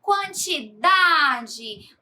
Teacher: quantidade onde o da é a sílaba tônica · a palavra quantidade, onde o dá é a sílaba tônica. Veja que em cada palavra, a sílaba destacada recebe o acento tônico, ou seja, é pronunciada com mais força.